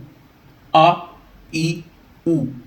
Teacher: زبر کے لیے ہم نے منہ اوپر کی طرف کھولا، زیر میں آواز نیچے گری اور پیش کے لیے ہونٹوں کو گول کیا گیا۔ ایسے ہی آپ نے پڑھنا ہے بغیر جھٹکے کے۔